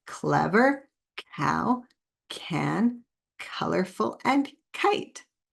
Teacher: the quiet back sound, because we make it in the back of our throat, or the coughing sound, because it sounds like a cough.